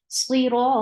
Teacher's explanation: You will give temporary sukoon at the end, and before temporary sukoon, if you will find 2 counts long, this temporary sukoon will change this status of 2 counts into 4. This is called mad added with sukoon.